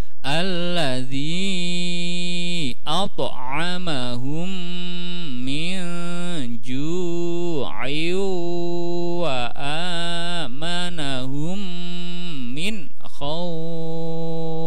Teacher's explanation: mat layin panjangnya 6 harokat